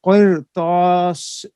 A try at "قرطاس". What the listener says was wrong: آپ کی طا کو، آپ نے بھی طا کو باریک پڑھا ہے، پھر پڑھیے.